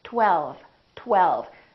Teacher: me 1212 there's a lot of movement that happened here first there was a tongue touching behind my upper teeth and then we round our lips for the W